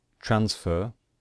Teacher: Transfer, we stress the first syllable. So we do not stress the final syllable